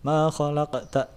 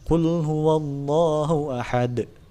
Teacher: Qalqalah sugro ini pantulannya tidak terlalu besar.